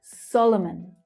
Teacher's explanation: So the stress there is on the first syllable. Solomon. You can see how the other two syllables in Solomon reduce to the schwa.